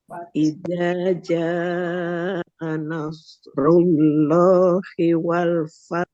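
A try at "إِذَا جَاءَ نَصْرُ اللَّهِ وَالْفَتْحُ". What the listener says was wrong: R ya. R. Haknya coba belum jelas. Lah. Haknya. Lah. Nah, munculkan haknya. Apa namanya setelah tak. Fat.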